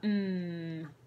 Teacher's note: it's the airs coming down our nose lips together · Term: M sound